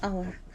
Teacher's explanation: The H is not pronounced. يعني ما بنلفظ ال H هون.